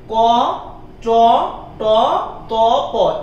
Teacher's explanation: ক, চ, ট, ত, প, এগুলো হচ্ছে অল্প প্রাণ ধ্বনি